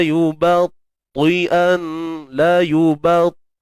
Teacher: Yang penting ba tu nipis, ta baru tebal.